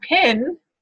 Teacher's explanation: if you say the word pin, you are going to get aspiration